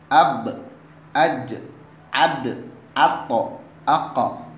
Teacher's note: apabila dia berharakat sukun, maka cara membacanya dengan dipantulkan